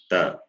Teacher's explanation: Your tongue touches just above the upper teeth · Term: dental